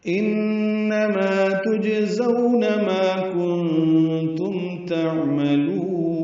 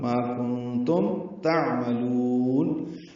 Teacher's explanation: کنتم میں نون ساکن کی آواز تا آنے کی وجہ سے اخفا ہے، نون ساکن کی آواز چھپائیں گے، میم ساکن کی آواز پہ اظہار ہوگا، ما کنتم تعملون۔